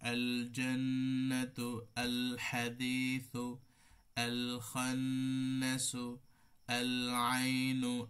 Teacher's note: এখানে লাম কিন্তু যখন ইজহার হয়, খেয়াল করবেন, তো লাম যখন ইজহার হবে তখন এটার সিফাত তাওয়াসসুতের সিফাত, মানে মিডিয়াম আওয়াজ ধরে রাখতে হয়। এজন্য এখানে মধ্যম পরিমাণ, আল জান্নাতু, আল হাদিসু, আল খান্নাসু, আল আইনু, এই যে আল মিডিয়াম কিন্তু ধরে রাখবেন, না হলে কিন্তু এটার সিফাত আদায় হবে না।